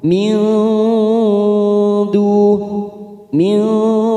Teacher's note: nun sukun bertemu Dal namanya Ikfa aqrab atau ikhfa Hakiki kita samarkan tiga ketuk